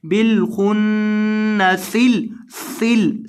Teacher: ان لفظوں کے اندر ہمارے پاس یہ خو ہے، پہلے لفظ کے اندر خو کو آپ نے پر کر کے پڑھنا ہے، اور یہاں نون ہے، نون کو گنہ کرنا ہے، بالخن اس طرح سے گنہ کریں گے، اور سین میں سیٹی پیدا کرنی ہے